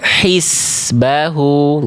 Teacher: zainnya berubah jadi huruf sin